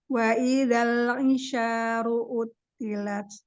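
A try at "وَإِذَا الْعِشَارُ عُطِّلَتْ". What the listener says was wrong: Tahan lam sukunnya, lebarkan ujung lidah coba. Lebar itu. Wa idal itu masih ujung. Lebar sedikit lagi. Sampai taring. giginya sampai taring. Gigi taring atas. kan ya, lebarkan sampai taring. Hati-hati melepas lam sukunnya tapi wa idal ai.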